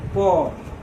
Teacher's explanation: जब बोलिएगा प तो दोनों ओठ सटेगा। ऐसा हो ही नहीं सकता है कि बिना ओठ सटे प आ जाए। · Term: उष्ठय वर्ण